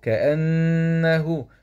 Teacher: نون شده فتحه مع الغنه